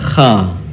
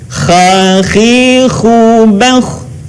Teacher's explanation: Huruf ini dikeluarkan dari tenggorokan yang terdekat dengan rongga mulut kita. Ciri khasnya terdengar suara seperti orang yang sedang mendengkur.